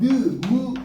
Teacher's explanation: 이렇게 느, 무, 으 하면 코에서 나온다. 그래서 콧소리 비음이 되는 겁니다.